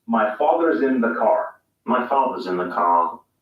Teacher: english is rhodic meaning that r sounds are always clearly pronounced british english is non-rhodic meaning that the r sound is not pronounced unless it's followed by a vowel sound